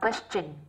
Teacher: nhưng riêng trong từ question thì nó lại phát âm thành âm chờ chứ không phải là âm sờ